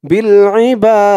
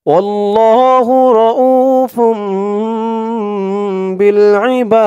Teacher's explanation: বা বলে তিন আলিফ টান দিয়ে এই দালকে ধরেছে, দালের নিচে যেটা সাকিন হয়ে গেছে। বিল ইবাদ, এই দালের নিচে জেরটা যখন সাকিন হয়ে গেছে তখন দালটা কলকলার হরফ হয়ে গেছে, ধাক্কা দিয়ে পড়তে হবে। যেমন বিল ইবাদ, এরকম লাস্টে একটু ধাক্কা খাবে।